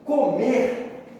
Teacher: Por exemplo, comer, assim como os verbos em geral, é uma palavra oxítona, porque a sílaba tônica é a última